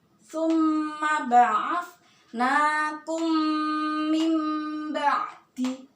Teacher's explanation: Dengung ki suaranya itu di hidung sekali lagi, ya. Kalau ada mem sukun bertemu ba, dengung suaranya di hidung, panjangkan 2 harokat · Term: ikhfa syafawi